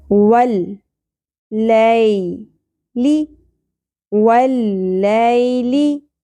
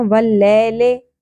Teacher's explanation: لی شارٹ رکھنا ہے اور اس کو اپنے مجہول طریقے سے بھی نہیں پڑھنا. واللیلے اس طرح نہیں پڑھنا جس طرح ہم نے ایشین مجہول طریقے سے سیکھا ہوتا ہے قرآن پاک.